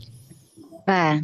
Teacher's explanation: Letakkan bibir bawah ke ujung gigi seri atas. Ibu terus coba bunyikan anginnya baru kita bunyikan harakatnya. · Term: huruf fanya